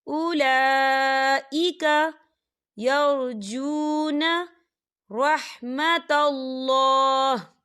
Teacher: اولا کھڑی حرکات ہے اور اس میں مد بھی ہے، تو ہم اسے 4 حرکت کی برابر کھینچیں گے